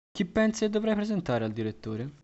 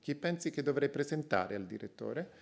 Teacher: In this case, the nuclear pitch accent is on V2.